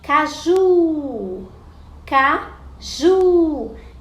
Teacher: o ju é a sílaba tônica, é a sílaba mais forte. Então, é a última sílaba. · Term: oxítona